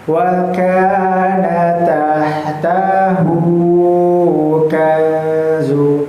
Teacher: Maka tahtahu itu dibaca panjang sebanyak dua harakat.